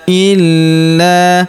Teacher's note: Huruf la kita tahan dan kita tekan karena terdapat tanda tasydid di atasnya. Lalu kita panjangkan dua harakat karena alif di depannya ya.